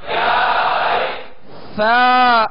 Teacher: سا کو نرمی کے ساتھ ادا کریں گے, اس میں سیٹی کی آواز پیدا نہ ہو